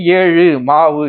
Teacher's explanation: மாவு இதோட சவுண்டும் பாருங்க ஊலதான் முடியும். இவ்வாறு வல்லின அல்லாத உகரங்கள் எப்பொழுதுமே முழுமையாக ஒலிக்கும். அப்ப இதுவும் என்னன்னா ஒரு மாத்திரை அளவில் முழுமையாக ஒலிக்கும். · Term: முற்றியல் உகரம்